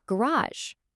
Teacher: The stress completely shifts to the end, garage. It's the same word, same letters, but it sounds completely different, all because of that stress pattern.